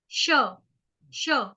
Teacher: इसमें क्या होता है, जब आप ये वाला श बोलते हो तो इस श में आपका श, श, जीभ हल्की सी फोल्ड होती है और तालु को टच करती है। श, श, श, इसको बोलते हैं तालव्य श।